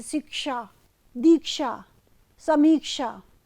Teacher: क्ष ये संयुक्त व्यंजन है जो क और मूर्धन्य श के संयोग से बना है।